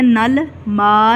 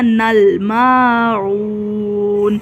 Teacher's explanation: اس لام کو قلقلے سے بچانا ہے